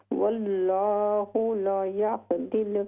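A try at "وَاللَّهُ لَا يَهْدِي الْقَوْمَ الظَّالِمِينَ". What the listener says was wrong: ला को लंबा कीजिए। वल्लाहु ला यहदिल क़ौमज़्ज़ालिमीन।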